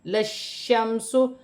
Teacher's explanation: شین مشدد ہے، جماؤ کے ساتھ سختی کے ساتھ، اور میم کو شین کے ساتھ ملا کر پڑھا جائے گا. میم ساکن ہے.